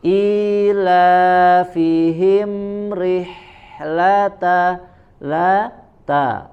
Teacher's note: huruf lam, kemudian huruf ta, ya, fathah keduanya dibaca dengan jelas, dibuka dan tipis